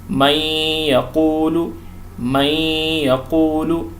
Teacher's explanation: پہلی مثال دیکھیں، نون ساکنہ ہے، اس کے بعد یا آ گیا تو نون کی آواز ختم ہو جائے گی، ادغام کریں گے، ساتھ میں غنہ بھی کریں گے · پہلی قسم کیا ہے کہ اگر یا، میم، واو اور نون آ جائے گا تو ادغام کریں گے لیکن ساتھ میں غنہ بھی کریں گے، یعنی ناک سے آواز نکالیں گے ساتھ میں